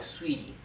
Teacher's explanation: Sweetie, se escribe sweetie, pero la T se pronuncia más bien como una R suave